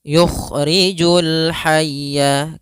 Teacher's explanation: Kha salah satu huruf isti'ala, maka agak sedikit dibalikan. Makhrajnya kita keluarkan daripada tenggorokan yang atas ya.